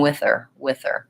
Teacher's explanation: I leave that H off I go right from the th into the ER so I'm going with her with her I wouldn't do it